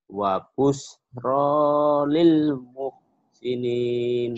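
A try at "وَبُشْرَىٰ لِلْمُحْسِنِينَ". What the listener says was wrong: Shinnya kurang keluar.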